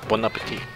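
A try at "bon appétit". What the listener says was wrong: You don't pronounce the last T.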